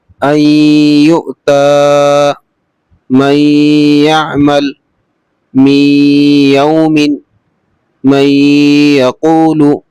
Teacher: تنوین ہو یا نون ساکن ہو اس کے بعد میں یا کی مشق دی ہوئی ہے تو یہاں پر تو غنہ ہوگا